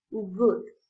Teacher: its place of articulation is velar and the back of the tongue touches the soft palate and restricts airflow for this reason it's a occlusive sound for example good the